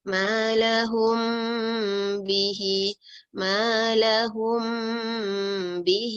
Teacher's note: Dengung juga tetapi dengungnya bukan sampai mim dengan mim. Ni adalah kita dengungkan dia tapi lidah kita tak begitu tutup rapat.